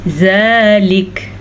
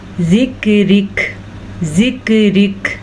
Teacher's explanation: زبان کی جڑ اوپر ٹکرا رہی ہے لیکن وہ منہ کی طرف ٹکرا رہی ہے، نہ کہ تالو کے ساتھ